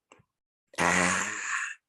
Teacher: that first cry that activates the lungs, that's an open A sound